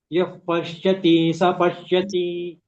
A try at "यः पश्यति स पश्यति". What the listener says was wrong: Yah pashyati sa. There is no dirgha. Yah pashyati sa. Pashyati.